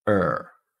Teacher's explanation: This is just one vowel sound followed by an L and a D, but that vowel has a little bit of R coloring on it. · So you can think of this as a rhotic vowel. So kind of like the R sound, but it's more vowel-like. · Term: schwar